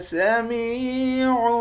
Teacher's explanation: میم کو یا کے ساتھ ملا کر یا کو ایک الف کی مقدار کھینچ کر پڑھیں گے، یا حروف مدہ ہے